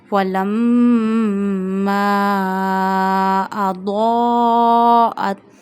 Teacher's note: It means dad is a mustalia letter. Read it first with a thick voice. And second thing is you have to stretch this mad also because of hamza after it up to 2 fingers.